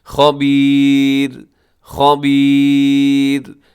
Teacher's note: خا موٹا ہے، آخر میں را باریک ہے کیونکہ را پہ ہم نے وقف کر دیا ہے۔ اگر وقف نہیں کریں گے تب تو یہ را پر پڑھا جائے گا، لیکن وقف کی وجہ سے کیا ہوتا ہے کہ اس سے پہلے یا ساکنہ آ گئی ہے تو بس پھر اس را نے باریک ہو جانا ہے، خبیر خبیر ایسے۔